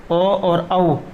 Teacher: ओ और औ, इनका जो उच्चारण स्थान है ये कंठोष्ट रहेगा